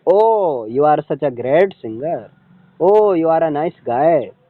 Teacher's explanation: तो ओ ये राइजिंग है और बाद में क्या है, एक तरह से फॉलिंग है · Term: राइजिंग फॉलिंग इंटोनेशन